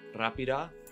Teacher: R, which sounds more like the Spanish R than the English one